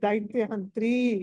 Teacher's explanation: దైత్య ఎక్కడైతే యా వస్తుందో అక్కడ మీకు చా వస్తుంది, చా రాకూడదు.